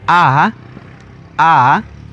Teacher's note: El tercer sonido que tiene la a es vocal larga con tono alto.